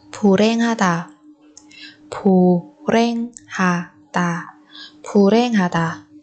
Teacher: Ở đây phù và hèn thì chúng ta biến âm thành phù ren